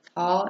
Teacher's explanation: The t sound is a voiceless stop sound. The sound for t is t, as in the beginning of tall and the end of ant.